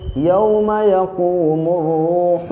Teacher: اب یہاں پہ کنفیوز مت ہوئیے گا، دیکھیے میم کے اوپر پیش ہے، الف اور لام یہاں پہ لگے ہوئے ہیں، اس الف اور لام کو نہیں پڑھیں گے، میم کو ڈائریکٹ را سے ملا دیں گے